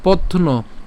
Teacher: পথ অর্থাৎ পথ ত পর্যন্ত এনে ন টাকে আলাদা উচ্চারণ করছি